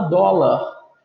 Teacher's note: a sílaba tônica não é a última, é a penúltima, acentuada por uma outra razão.